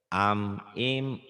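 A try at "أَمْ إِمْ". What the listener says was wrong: jangan dipanjangin. Gak ada yang panjang.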